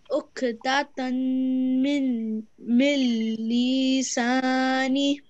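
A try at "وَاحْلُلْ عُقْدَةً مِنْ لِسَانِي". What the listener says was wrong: You don't pronounce this noon if there is a lam. If so this is actually a rule. Maybe we can talk about this later, but in this case you don't pronounce this noon, okay? عقدة من لساني.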